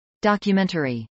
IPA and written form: dˌɑkjəmˈɛntɚi (documentary)